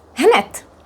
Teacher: the d is pronounced as t here